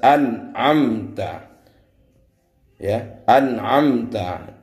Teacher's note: Setiap ada nun mati bertemu dengan ain, maka harus dibaca idhar. Idhar artinya jelas. Maka nunnya harus dibaca jelas.